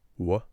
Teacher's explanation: when I say w, I'm doing two things: rounding my lips and raising the back of the tongue.